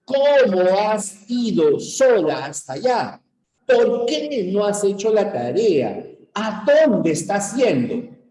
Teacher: Siempre aparece un enfático y luego va bajando